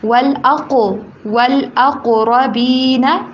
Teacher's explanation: قاف کو موٹا ساتھ میں قاف کے پر کلکلا آواز کو ہلائیں تھوڑے سا